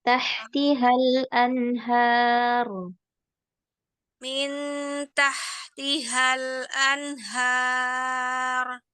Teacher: ro-nya jangan terlalu lama mengalirnya